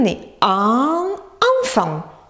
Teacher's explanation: ce sont les voyelles que l'on dit en faisant passer l'air par le nez. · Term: voyelles nasales